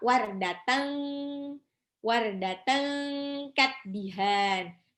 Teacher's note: Itu tanwin pada tak marbutoh ketemu sama kaf. Itu namanya ikhfa.